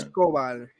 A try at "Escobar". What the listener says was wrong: No, there's no accent on the E, so it'd be Escobar. Stresses on the very last syllable. Unless there's an accent on his name, which I don't think there was.